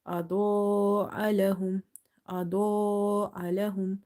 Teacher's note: Dod is heavy from the musta'aliya letters, and this alif is madde muttasil, so you will stretch up to 2.5 alif.